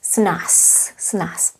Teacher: the Z at the end is pronounced as S